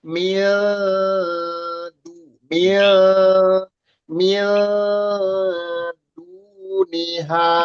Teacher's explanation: Jadi mil sambil melafalkan nunnya samar, persiapan di dal. Kita sudah ancang-ancang huruf dal.